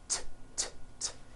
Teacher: It's unvoiced. Your vocal cords are not vibrating. T, t. Now don't change a thing with your mouth.